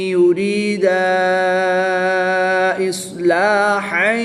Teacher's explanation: یریدا، الف سے پہلے دال پر زبر ہے تو یہاں پر الف مدہ ہوگا۔ الف مدہ کے بعد حمزہ دوسرے کلمے میں ہے تو یہاں پر مد منفصل ہوگی، 2 سے 3 الف تک کھینچ کر پڑھیں گے۔